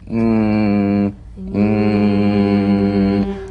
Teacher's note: soft palate back of the tongue to the soft palate mmm vibration coming through the nose